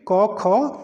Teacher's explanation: ये पहला और दूसरा वर्ण है इसलिए ये क्या है अघोष वर्ण है